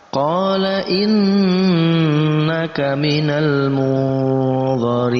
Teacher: Gunnah musyaddadah kita baca dengan dengungan panjangnya 2 harakat.